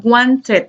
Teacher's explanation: como si añadiéramos una sílaba al final del verbo